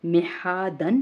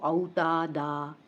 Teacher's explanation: दो ज़बर की तनवीन का कायदा कुछ मुख्तलिफ है, क्योंकि दो ज़बर की तनवीन के साथ आपने देखा है अक्सर एक ज़बर और एक अलिफ ज़ाइद लगा होता है, तो वो वक्फ़ की सूरत में पढ़ा जाता है। जैसे कि जब हम इसे वक्फ़ करेंगे तो अलिफ मद्दा जितना लंबा खींच कर पढ़ेंगे। जैसे कि ये हरफ है मिहादन है तो वक्फ़ की सूरत में ये बन जाएगा मिहादा।